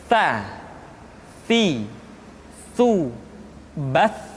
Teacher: ujung lidah disentuhkan dengan dinding dua gigi seri bagian atas.